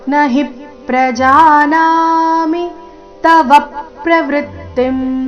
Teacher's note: ನ ಹಿ ಎರಡು ಅಕ್ಷರ ರಸ್ವ ಹಿ ಮೇಲೆ ಆಘಾತ